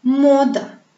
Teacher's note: Le son O est tonique.